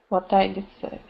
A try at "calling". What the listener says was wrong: You didn't pronounce the ing. You said continued call a few more.